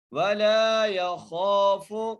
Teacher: خوا کو موٹا کر کے اور ایک الف دار کھینچ کے پڑھنا ہے